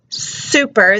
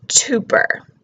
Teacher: They're putting the T for the S. They're just substituting the wrong sound.